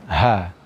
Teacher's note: Akhir ayat ini ditutup dengan huruf ta marbutah, yang mana huruf ta yang seperti ini apabila disukunkan karena waqaf, maka dia diganti dengan bunyi huruf ha. Ha yang berada di aqsal halqi, ya, atau tenggorokan yang paling jauh ini, ya, ha, disertai dengan keluarnya angin.